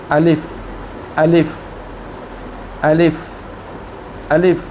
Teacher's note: अलिफ़ को हम हलक से पढ़ते हैं, अपने थ्रोट से। अलिफ़ अलिफ़ अलिफ़ अलिफ़, इसको ज़्यादा लंबा करके नहीं पढ़ते, अलीफ नहीं पढ़ते, इसको अलिफ, अलिफ।